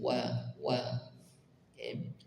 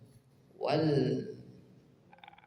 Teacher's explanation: huruf wau yang berharakat fathah maka ditipiskan wa wa masuk ke lam sukun wau langsung masuk ke lam